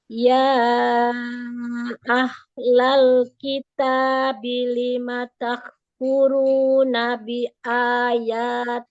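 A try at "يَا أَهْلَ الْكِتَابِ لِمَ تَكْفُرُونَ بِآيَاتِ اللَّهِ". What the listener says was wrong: Ya ahla. Haknya alirkan lagi.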